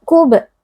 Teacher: huruf ba sukun berada di tengah-tengah kata atau kalimat, dibaca dengan suara yang memantul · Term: Qalqalah sughra